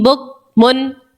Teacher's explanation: تنوین کو نہ پڑھ کے میم کو پڑھو گے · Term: اقلاب